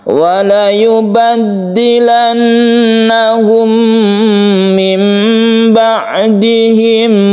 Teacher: nun bertemu dengan ba disebut iklab yang menjadi mim, suara nunnya menjadi hilang dan diganti menjadi mim